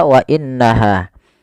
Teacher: tidak langsung dibaca wa innaha, tapi ditahan dulu suara gunnahnya sepanjang 2 harokat. Kemudian pada lafal ha ada mad tabi'i.